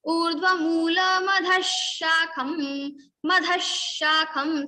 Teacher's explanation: we will repeat the sha 2 times in the place of visarga also · So urdhva moolaha visarga is followed by talavya sha. So talavya sha will come in the place of visarga.